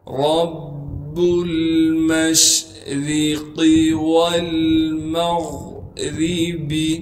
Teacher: را کے نیچے زیر ہونے کی وجہ سے را کو باریک کر کے پڑھیں گے